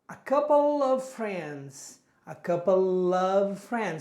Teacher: the final sound of the first word links with the beginning sound of the next word